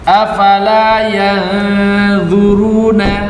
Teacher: nah dia menipiskan ghunah ketika ikhfa